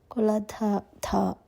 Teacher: ఆఖరి పాదంలో కులధ ధ H sound mix చేసి చదవాలండి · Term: మహాప్రాణాక్షరాలు